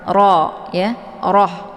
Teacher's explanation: Untuk hukum bacaan rohnya dibaca tebal, yaitu dengan posisi lidahnya terangkat ke langit.